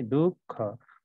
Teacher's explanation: यो विसर्ग चिन्ह उच्चारणमा ह उच्चारण हुन्छ